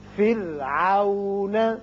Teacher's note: یہ را باریک ہوگا اس لیے کہ پیچھے کسرہ یعنی زیر ہے